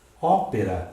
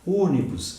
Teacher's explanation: Ópera, acento agudo, timbre aberto, proparoxítona. Ônibus, acento circunflexo, timbre fechado, proparoxítona.